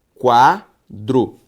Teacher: A sílaba tônica de quadro é quá.